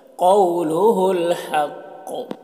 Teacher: حق قاف کو پر پڑھیں گے، وقف کی صورت میں قلقلہ ہوگا